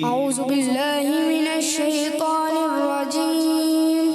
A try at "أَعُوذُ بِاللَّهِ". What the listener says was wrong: اعوذ باللہ زا ہو جائے گا اعوذ باللہ ذال اعوذ باللہ من الشیطان الرجیم